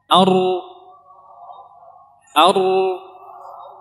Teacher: Kemudian kita getarkan, kita keluarkan suara dan kita datangkan sifat takrir, sifat yang bergetar.